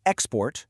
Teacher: with a stress on that first syllable, I'm talking about a noun, a thing.